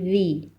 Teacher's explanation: زال میں زبان کی نوک اوپر والے دانتوں کے نچلے سرے پر لگائیں گے